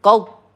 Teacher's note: Ada yang membaca memantul qadba, hati-hati ya, karena huruf dot sukun tidak memantul, dia bukan huruf qalqalah